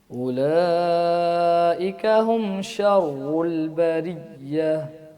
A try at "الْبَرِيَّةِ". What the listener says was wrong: بریہ، یہ جو سختی کر رہے ہیں نا یا کے اوپر زیادہ سختی نہیں کرنی ہے، اس کو نرمی کے ساتھ پڑھنا ہے. بریہ.